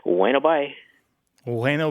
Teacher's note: it's Bueno with the B barely pronounced right pronounced like a w